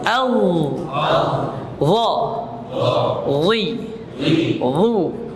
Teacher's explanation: lembut sentuhannya tapi dia pangkal lidahnya terangkat ya